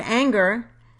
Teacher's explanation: in the word anger the first syllable has primary stress and the second syllable is unstressed